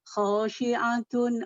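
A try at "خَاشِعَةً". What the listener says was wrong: Khasyiatan Bu, afan Bu. Fathah, fatatain. Khasyiatan bukan khasyiatun.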